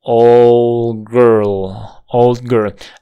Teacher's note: aquí la d no se está omitiendo pero si hay una parada muy suave está haciendo una pausa con una parada glotal